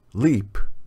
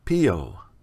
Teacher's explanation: before a vowel the back of the tongue remains low after a vowel the back of the tongue elevates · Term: two variants of l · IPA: /l/